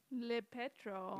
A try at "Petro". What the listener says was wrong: No, you just say Petro.